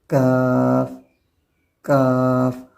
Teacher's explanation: اس کا جو مخرج ہے وہ زبان کی بالکل جو جڑ ہے اس سے تھوڑا سا ہٹ کر ہے، بالکل جڑ سے نہیں ہے